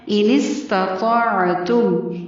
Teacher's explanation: ان استطاعتم، انس پڑھنا ہے اس کو. تا اور طا اکٹھے آ رہے ہیں، تا باریک طا پر پڑھا جائے گا اور عین کی آواز حلق سے ادا ہوگی · سین کو باریک پڑھنا ہے اور لمبا نہیں کرنا